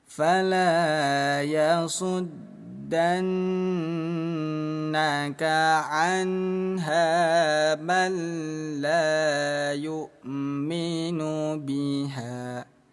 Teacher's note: nun yang bertasydid kita tahan dua ketukan dengung